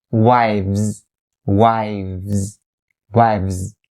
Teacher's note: after v sound you have the z sound